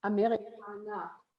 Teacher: Basically, forget about the R and just put some sort of, as we like to call it, schwa sound in there.